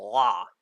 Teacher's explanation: Anyway, we got the standard L, la, and then we got the L sound, but it's in the back of your mouth and nothing is really touching.